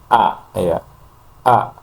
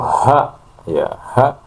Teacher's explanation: Jadi tidak hembusan nafas di situ bisa dikatakan tidak ada karena pita suara tertutup. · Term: hamzah